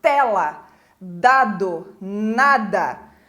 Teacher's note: a língua tá encostada nos dentes de cima nos dentes superiores